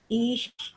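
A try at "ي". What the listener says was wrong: Ihnya kurang ya? Ihnya kurang, Bu.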